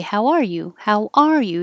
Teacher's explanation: the emphasis is on r because that's the condition you're in